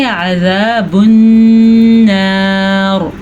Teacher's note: را کو پر پڑھنا ہے, وقف کی وجہ سے را سے پہلے زبر بن رہی ہے تو اس لیے را پر پڑھی جائے گی. اگر ہم یہاں پہ وقف نہیں کریں گے تو را باریک پڑھی جائے گی کیونکہ را کے نیچے زیر بن رہی ہے.